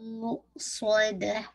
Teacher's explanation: मु हमजा पे झटका दीजिएगा, मुस्वदा आपको वैसे कीजिएगा, ठीक है, स्वाद हैवी और दाल को लाइट रखिएगा